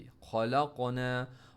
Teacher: हमने इम्प्रॉपर पढ़ा, खलक़ना, ख मोटा, लाम को क़ाफ के साथ, क़ाफ में बाउंस भी और हैवी